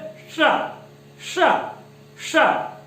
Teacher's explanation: इसका जो उच्चारण साथियों, तो ये है तालव्य, तालव्य मतलब जो जिह्वा है वो हमारी तालु को स्पर्श करती है